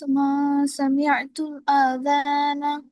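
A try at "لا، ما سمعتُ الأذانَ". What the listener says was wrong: আ টান নাই এখানে, হ্যাঁ। মা লা মা সামি'তুল আযানা। লা মা সামি'তুল আযানা। লা মা সামিয়াতুল আযানা, না আমি আজান শুনিনি।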